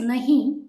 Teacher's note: this word should end with a nasal sound n when we write in English we can spell it as n